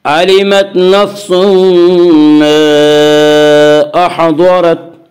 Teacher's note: दुआत को पुर पढ़ेंगे। दुआत हुरूफ मुस्तालिया में से है। हुरूफ मुस्तालिया 7 हैं, जिनका मजमुआ खुस्सा ज़ग़्त तनक़ीज़ है, जो हमेशा हर हाल में पुर पढ़े जाते हैं।